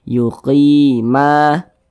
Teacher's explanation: Nah, mad tabi'i panjangnya 2 harokat. Yuqima, ma dibaca panjang.